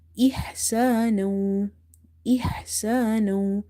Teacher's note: Ha is from the middle of the throat